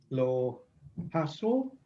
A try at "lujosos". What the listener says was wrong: So it's, don't forget that oo. Loo. And the J is a h sound. lujosos. Lujosos.